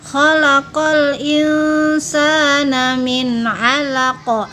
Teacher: qalqalah kubro. Artinya besar, bacaan yang keras atau jelas pantulannya. Ciri-cirinya yaitu apabila huruf-huruf qalqalah mati karena waqaf atau dihentikan atau berada di tengah kalimat atau ayat.